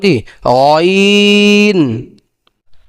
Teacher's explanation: কন্ঠনালী শেষ থেকে গাইন উচ্চারণ করা হবে